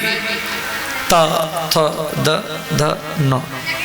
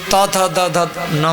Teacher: दंत वर्ण, जब जीव दांत में टकराएगी त थ द ध न, तो जीव दांत में टकराएगी तो 5 अक्षर की उत्पत्ति होगा।